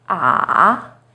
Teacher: it first steps down then rises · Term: third tone